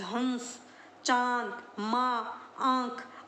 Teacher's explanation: इनका उच्चारण नाक और मुंह दोनों से होता है। अनुस्वार का तो सिर्फ नाक से होगा और अनुनासिक का नाक और मुंह दोनों से होगा।